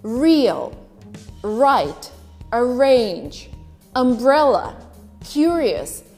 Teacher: in received pronunciation in great britain you would only pronounce the r that is followed by a vowel